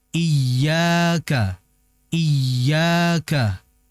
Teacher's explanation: Ini namanya adalah mad th'i atau mad asli. Dibaca dua harakat. Dikeluarkan lewat rongga mulut. Jadi jangan sampai dibaca iyo.